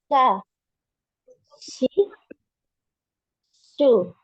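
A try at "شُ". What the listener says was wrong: Jangan shu. Jangan ke depan ya, jangan ke apa namanya, ke ujung. Jangan ke ujung lidah ya, di tengah. Sha, di tengah terus. Shi, shu.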